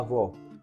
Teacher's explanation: na palavra avó a sílaba tônica é vó